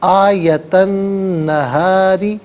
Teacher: نون حرف شمسیہ ہے تو یہاں نون کی آواز ہوگی، لام کی آواز ادا نہیں کی جائے گی۔ آیت النہاری، را کے نیچے زیر ہے، را کو باریک کر کے پڑھا جائے گا، لیکن اگر کسی وجہ سے آپ نے آیت النہار یہاں وقف کیا، رکے، تو ظاہر ہے کہ را کو ساکن کرنا پڑے گا.